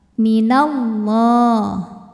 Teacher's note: lam pada lafaz Allah atau lam jalalah dibunyikan secara tafkhim sebab harakat huruf sebelumnya fathah ya maka ini kita bunyikan dengan tebal minallah kemudian Alif lamnya